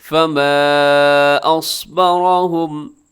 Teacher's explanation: ایک اس کے اوپر جو مد ہے وہ چھوٹی مد ہے، اصبر میں صاد موٹا ہے اور حرف را یہ بھی موٹا پڑا جائے گا کیونکہ را کے اوپر حرکت ہے